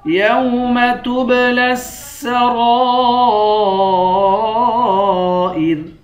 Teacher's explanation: را کو 1 الف کی مقدار بھی کھینچیں گے اور را پر مد ہے، اس مد کو 5 الف کی مقدار کھینچ کر پڑھیں گے